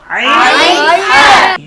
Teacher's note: কণ্ঠনালীর মধ্যখান থেকে, হলকের মধ্যখান থেকে 2টি হরফ উচ্চারিত হয়, আইন হা